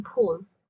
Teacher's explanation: This is a voiceless bilabial stop, meaning you stop the airflow with a sudden closure of your mouth by pressing the lips together, like the P in pull.